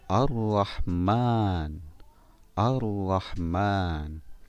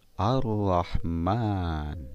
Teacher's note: Ada alif lam bertemu dengan huruf ra, maka lamnya dilebur atau dibaca tidak jelas.